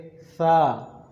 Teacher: سا کو ادا کرنے کے لیے آپ اوپر اور نیچے والے دونوں دانتوں کے درمیان میں زبان کو لے کے آئیں گے، یعنی ایسے تھوڑی سی زبان آپ باہر نکالیں گے اور اوپر اور نیچے والے دانتوں کے درمیان زبان کو رکھیں گے اور ادا کریں گے سا۔